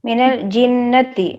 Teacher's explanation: جن میں غنہ کریں گے. کیوں؟ اس لیے کہ حرف نون کے اوپر تشدید آئی ہے